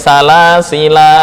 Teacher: Ada ulama yang menyebut salasila ketika waqaf dibaca panjang. Ya. Kemudian ada yang mengatakan bahwa salasila baik wasol maupun waqaf dibaca dengan membuang alif.